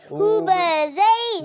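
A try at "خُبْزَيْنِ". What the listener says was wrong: زی سیٹی نہیں کریں، خوب زئی، زانی،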